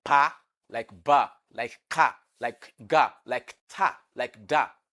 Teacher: They are all plosive because the release of air is sudden. So remember, the pa is the voiceless bilabial plosive.